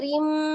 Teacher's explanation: Idgham artinya dilebur, bi dengan gunnah, dengung ya. Maka ditahan rim 2 sampai 3 harokat, suaranya dimasukkan ke rongga hidung. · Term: idgham bi gunnah